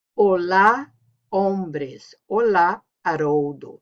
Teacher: So H is silent, no sound.